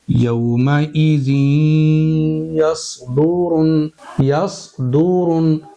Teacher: जैसे हांडी होती है उसके मुंह को ढक्कन से ढांपते हैं ना। इस तरह से जब हम स्वाद को अदा करेंगे तो तालुक को जबान से ढापेंगे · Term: इत्तबाक